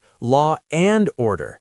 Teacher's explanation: Because law ends in a vowel sound that is close to awah and and starts with awah, the mouth just bridges them with an R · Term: intrusive R